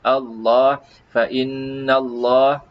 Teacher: lafzul jalalah disebutkan dengan lam yang tebal